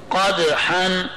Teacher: قدحا میں دال پر جزم تھا اس کو ہم نے ہلایا کیونکہ حرف قلقلہ ہے